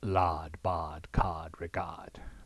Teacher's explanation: it is pronounced so much in the throat as to be little more than the middle or Italian ah